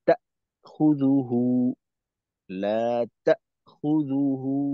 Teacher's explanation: তো এখানে তা খুদুহু, লা তা খুদুহু, হামজার মাখরাজে আওয়াজটাকে আটকাইতে হবে এবং একটু সময় থামতে হবে, আওয়াজটা বন্ধ হবে একেবারে। তারপর যদিও সময়টা খুবই কম, তবে এই বিষয়টা থাকবে।